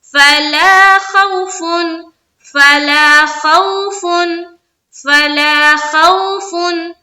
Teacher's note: غور سے سنیں فَإِمَّا يَأْتِيَنَّكُم مِّنِّي هُدًى فَمَن تَبِعَ ہُدَايَ، یہاں تک ہو گیا، آگے چلیں گے فَلَا خَوْفٌ عَلَيْهِمْ، فَلَا الف مدہ، خوف، خو دیکھیے یہاں پر واو ساکن سے پہلے زبر ہے، یہاں پر واو لین کا قاعدہ ہو رہا ہے، تو ہمیں نرمی کے ساتھ اور جلد پڑھنا ہے